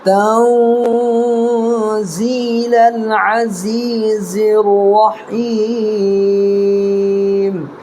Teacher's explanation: نون ساکن ہے، نون ساکن کے بعد حروف اخفا کے 15 حرفوں میں سے زا آ رہا ہے